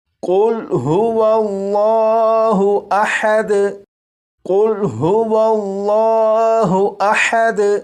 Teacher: اس لفظ کے شروع میں جو قاف ہے اسے پور یعنی موٹا پڑھیں گے